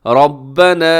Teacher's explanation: را موٹی پڑی جائے گی کیونکہ را کے اوپر حرکت ہے